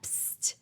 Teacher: Okay, quick side note on psst, and we do it like that, psst. So that's the sound that we make in a whispered tone, psst, when we want to alert the listener that we have some secret or confidential information that we only want to share with them.